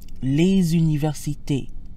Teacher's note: Notice how les sounds when followed by a vowel, as in les universités. The usually silent S sounds like a Z. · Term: liaison